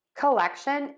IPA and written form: kəˈlɛkʃən (COLLECTION)